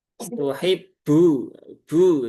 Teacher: Huruf ba ini terkadang kalau orang yang logatnya logat Jawa ya, termasuk saya ya, logat Jawa Jogja itu, baknya itu dia keluar hamesnya.